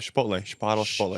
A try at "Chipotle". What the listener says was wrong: Because you guys can't say your CH. Chipotle. it's not a SH. So why would Chipotle be different than chair? chair and Chipotle? It's Michael Che.